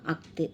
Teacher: ஆயுத எழுத்து வந்து அரை மாத்திரை கொண்டது.